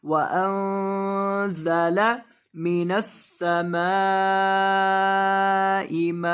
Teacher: नून के ऊपर गुन्ना करेंगे क्योंकि यहाँ नून के बाद ज़ा है, नून साकिन के बाद जब भी ज़ा हो वहाँ गुन्ना होता है.